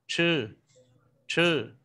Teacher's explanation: CH đọc giống TR nhưng bật nhẹ hơi ta đọc là chư, chư.